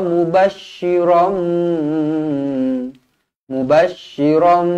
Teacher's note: Mim kecil, ekornya ke bawah bertemu dengan ba. Hukum dia iqlab. Iqlab dibaca dengung dua harakat.